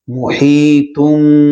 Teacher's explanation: تھوڑا سا غنہ لمبا کیا جاتا ہے ایک الف کی مقدار کے برابر